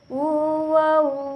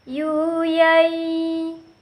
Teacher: Terakhir ketika mim, nun, tanwin bertemu dengan huruf waw dan ya, maka diucapkan dengan lebih sempurna diucapkan ketika suara keluar dari rongga hidung